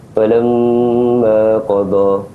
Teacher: Untuk perkataan yang ada syaddah pada huruf mim ni, kita kena wajib dengung pada kadar 2 harakat.